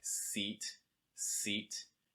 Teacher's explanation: the back mid back of your tongue is going to be pretty high but the front and the very back of your tongue will be down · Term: long i sound, long I